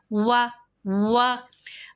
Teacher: گے، وا پہلے ہونٹ گول کیے اور پھر اس کے بعد ہونٹوں کو مکمل سامنے کی طرف کھول دیا